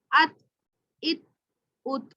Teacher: حمزہ تا زبر ات، حمزہ تا زبر ات، یہ آواز ہماری بند ہو رہی ہے، یہاں پہ زبان ہماری جو ہے تا کی آواز بند ہو رہی ہے، یہاں سے پتہ چل رہا ہے کہ یہ اس ساؤنڈ یہاں سے اس کی جو ہے پروناؤنسیشن نکلے گی۔ تا کا مخرج جو ہے وہ زبان کی نوک کو ثنایا علیا سے ہے